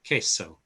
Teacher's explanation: QU equals K in Spanish. You don't sound the U at all. It makes the Q a K. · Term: K sound